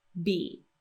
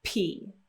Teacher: If you put your hand on your throat, you'll feel it right from the very beginning of this pronunciation, B, B. Now, if you get rid of that vibration, then instead of sounding like B, you will have pronounced P